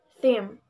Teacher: this word has two consonants first voiceless Dental fricative sound second voiced by labial Nestle sound Ma and has one vowel